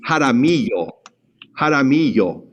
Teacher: We're going to treat the double L like a Y, so it's going to have a Y sound.